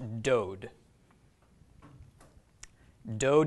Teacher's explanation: it loses its V sound and no longer has the V sound and it makes the sound of long oh